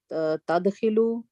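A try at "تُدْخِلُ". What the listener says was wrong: Tudkhilu. Ta has a dhamma.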